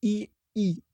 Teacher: ई अगर आप बोलोगे तो जीभ तालु पे लग रही है, मूर्धन्य में।